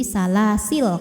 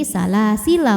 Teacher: Lam fathah kalau berhenti jadi sukun, jadi salasil kalau berhenti.